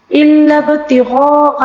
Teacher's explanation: مد متصل کو 5 الف کے برابر کھینچ کر پڑھنا ہوگا